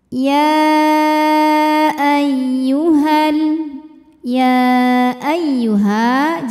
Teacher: ya tasdid ini dibunyikan dengan naber jadi kita naikkan intonasi suaranya ya tidak perlu ditahan · Sedangkan hamzahnya a masuk ke ayyuha ke kata kedua. Maka ya-nya dipanjangkan boleh 4 boleh 5 harokat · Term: mad jaiz munfasil